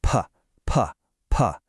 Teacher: No vibration, just a little puff of air. That's a voiceless consonant.